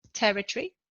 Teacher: in territory the noun the stress is on the first syllable